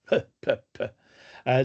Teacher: Bilabial, ça veut dire que tes 2 lèvres sont fermées et tu vas pousser et ensuite tu vas ouvrir les 2 lèvres. Et ça a tendance à créer une explosion de son.